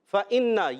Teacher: نون مشدد ہونے کی وجہ سے ایک الف کا غنہ بھی کریں گے، نون کو لام سے ملائیں، لام کو ہلانا نہیں ہے۔